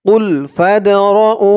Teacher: এই দালটা হচ্ছে কলকলার হরফ, ধাক্কা দিয়ে পড়তে হবে।